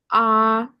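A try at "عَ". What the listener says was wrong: More big smile. Like your mouth is totally stretched. Smile position. Ah, And keep it short. This is ah. Ain with the fatta.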